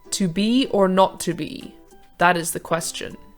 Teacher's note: variation of iambic pentameter the feminine ending this simply means that the line has 11 syllables instead of 10 and the last one is unstressed